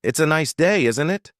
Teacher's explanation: The tone going up at the end tells the listener that you're asking a question. If you're making a statement, the intonation usually goes down at the end.